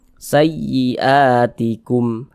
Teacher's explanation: intonasi suara kita itu sedikit lebih tinggi dibandingkan dengan huruf-huruf di sampingnya, ditekan. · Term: naber